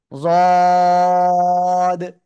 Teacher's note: এই জদ অক্ষরটা কিন্তু মোটা আওয়াজে উচ্চারণ করতে হবে, একেবারে মোটা, কোনো চিকুন না কিন্তু। জদ, মোটা, যদি চিকুন আওয়াজ হয়ে যায় তাহলে কিন্তু সমস্যা।